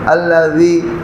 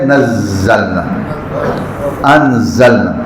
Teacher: زبان باہر نکلے تو ذال بن جاتی ہے، زبان اندر رہے تو زے ہے، جیسے نزلنا، انزلنا۔ زے میں ایک خصوصیت ہے سیٹی کی جو ذال میں نہیں ہے، ذال نرمی کے ساتھ ادا کرتے ہیں الذی، لیکن جب آپ زے بولیں گے تو بولیں گے نزلنا، انزلنا۔